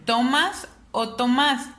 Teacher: yo me doy cuenta que está en el más entonces es una palabra aguda porque está en la última sílaba